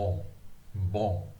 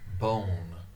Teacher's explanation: In French, it's very popular, a nasalized N.